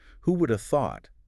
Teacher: Would have becomes woulda, just like coulda or shoulda, and the who links right into it. · The have just vanishes. It becomes a little A sound. Completely. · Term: connected speech